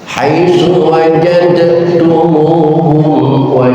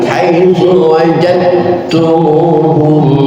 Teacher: Bacaan pertama saya bacakan haitsu wajadtumuhum, dalnya dibaca dengan jelas wajadtumuhum. Yang kedua dalnya saya hilangkan haitsu wajadtumuhum. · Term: idgham mutajanisain